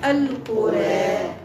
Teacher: هذاك الالف الممال هو اللي عطاني ترقيق الراع فيها وجه واحد عند الوقف نوقف بالاماله بالتقليل